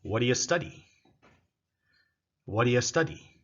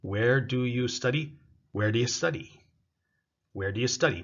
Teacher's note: So what do you becomes whatia. Where do you becomes where do ya. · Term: reduced